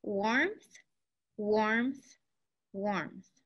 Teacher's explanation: It almost sounds like there's like a P between M and T